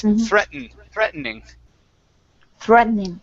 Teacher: So I swallow the T. This is an American pronunciation.